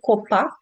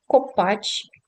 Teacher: Був звук К, а тепер став ч.